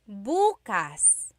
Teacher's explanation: emphasis is on the first syllable that means tomorrow.